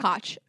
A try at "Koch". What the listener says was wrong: How did you even get there? It's not a hard K.